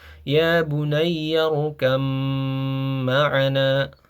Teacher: Karena huruf ba dan mim ini berasal dari makhraj yang sama yaitu syafatain, maka dia terjadi idgham mutajanisain. Huruf ba ini menjadi masuk ke huruf mim yang tadinya tulisannya ya bunayarkab ma'ana.